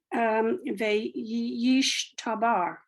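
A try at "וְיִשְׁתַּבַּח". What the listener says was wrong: Bach, Bach. It's a chet. It's a chet.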